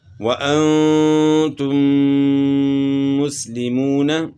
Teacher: میم ساکن کے بعد دوسرا میم ہے اس لیے یہاں غنہ ہوگا